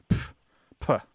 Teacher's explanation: it's a sharp exhalation of air with a p sound at the beginning like P P yeah right and so it's basically a spelling